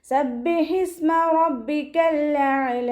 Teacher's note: 2 ഹർഫുകൾ ഉച്ചരിക്കുന്ന കനം കൊടുക്കുക. ഹഇൻ്റെ മഖ്റജ് വസ്തുൽ ഹൽക്കാണ്, സൗണ്ടിനെ വ്യക്തമാക്കി കൊടുക്കുക. സീന് കൽക്കലയുടെ ലെറ്റർ ഇല്ലാത്തത് കൊണ്ട് ഹാഫ് സുക്കൂന് കൊടുക്കുക, ശ്രദ്ധിക്കുക കേട്ടോ.